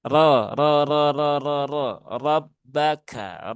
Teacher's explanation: Maka dibaca dengan tebal. Kembali mengingatkan huruf tebal cara membacanya dengan menaikkan pangkal lidah.